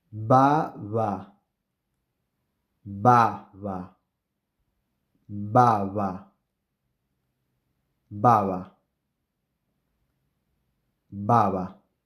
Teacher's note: the first one is bilabial and the second one is an approximant